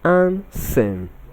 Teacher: The option C is pronounced as ansem, not and-some. The D in this word is silent, not and-some. Ansem. So we have the R sound, ansem.